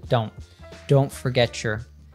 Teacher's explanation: we have a stop T in don't.